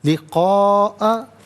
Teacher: Minimum اس کو 3 سے 4 حرکات کی مقدار کھینچ کر پڑھنا ضروری ہے، میگزیمم اس کو 5 سے 6 حرکات کی مقدار کھینچ کر پڑھ سکتے ہیں۔ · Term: مد متصل